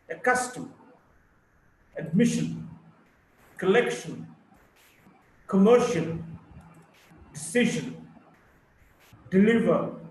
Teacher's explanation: Primary stress on the second syllable